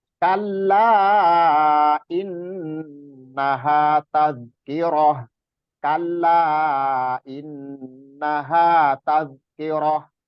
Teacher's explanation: Masih di gunahnya masih kurang, terus panjangnya kala itu masih kurang, masih terkesan terburu-buru ya.